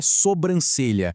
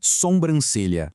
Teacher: Lembrando daquelas regrinhas de sons nasais que a gente acabou de ver, o erro gramatical aqui é justamente colocar um som de M na primeira sílaba sem nenhuma necessidade, estragando a pureza da palavra. · O correto é sobrancelha, sem nenhum som nasal no início.